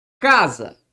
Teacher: é a palavra cuja sílaba tônica ocupa a penúltima sílaba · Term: paroxítona